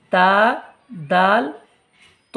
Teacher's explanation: একই রং আর এই তিনটে অক্ষরের একটাই মাখরাজ হবে সেটি হবে তা জিভের আগা সামনের ওপরের দুই দাঁতের গোড়ার সাথে লাগিয়ে উচ্চারিত হয়